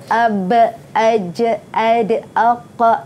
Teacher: Mim sakinah mesti bacaan antara dengung dengan jelas, mad silah bacaan pendek, bacaan panjangnya, qalqalah berdetak ya, baju daqata. Huruf ba, huruf jim, huruf dal, huruf qaf, huruf ta. Semua ini mesti ada detak.